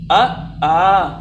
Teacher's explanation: कंठ में जब हम छोटा आ बड़ा आ बोलते हैं तो गौर करिए कंठ से ध्वनि निकलती है